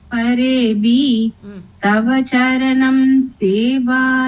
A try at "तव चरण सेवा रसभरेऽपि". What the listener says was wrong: charanam is not there charanam is not there तव चरण सेवा रस भरेपि